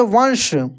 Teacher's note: ये तालु से इसका उच्चारण होता है। इसका नाम है तलव्य श